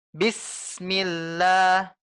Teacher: Yang benar adalah kita tekan hingga tidak ada jeda antara bis dengan mi. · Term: rokhah